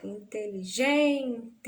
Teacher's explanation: Da sílaba tônica dessa palavra, inteligente. Então, gen é a sílaba mais forte da palavra inteligente